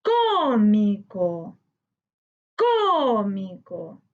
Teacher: La sílaba tónica está en co, correspondiente a las palabras esdrújulas. Le colocamos tilde porque la regla indica que todas las palabras que tienen sílaba tónica en la antepenúltima sílaba llevan tilde.